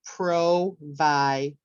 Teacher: I would keep it low for pro, then I would raise it for vi, and then I would lower it for der.